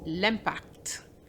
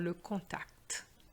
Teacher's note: That was l'impact. And you do pronounce the T even though you may have learned that the final T is silent. And that is the same for le contact.